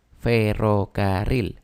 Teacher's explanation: en el caso de ferrocarril la sílaba tónica está en la última